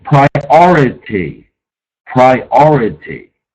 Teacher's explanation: Accent on the second syllable